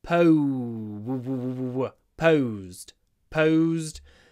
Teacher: When you pronounce pose, make sure you get a lot of w in it.